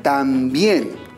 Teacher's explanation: Encontramos dos sílabas. Y en la última sílaba tenemos la unión de una vocal débil con una vocal fuerte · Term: diptongo